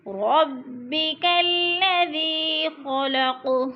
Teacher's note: خا موٹا، قاف بھی پر پڑھا جائے گا